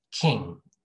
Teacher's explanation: It's like ng together, but there's no g sound. Maybe just a little bit, but not a lot.